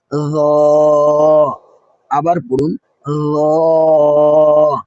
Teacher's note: জিহ্বা সামান্য বের হবে এবং আওয়াজ মোটা হবে।